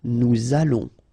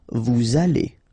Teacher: Nous allons, remember, final S not pronounced, O and together, it's on. And then we'll make this little link between the two, what we call the liaison